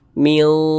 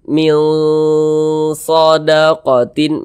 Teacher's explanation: huruf shad ini termasuk huruf yang tebal dia. Dia termasuk pada huruf isti'ala. Maka bunyinya pun kita tebalkan.